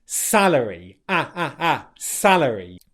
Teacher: Make sure you've got a nice vowel sound on the first syllable there, and then your tongue doesn't touch the roof of your mouth for the R sound